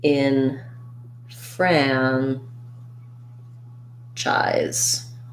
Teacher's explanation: and the letter letters sc say the z sound and then the e n in enfranchise is an unstressed syllable so it sounds more like an in